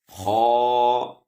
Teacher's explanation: خو یہ موٹا حرف ہے، خو حلق سے ادا ہوتا ہے۔